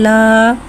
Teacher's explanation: खड़े ज़बर को एक अलिफ यानी 2 हरकत के बराबर खींच के पढ़ेंगे और ज़बर को खड़े ज़बर को मुँह खोल के अदा करके पढ़ेंगे।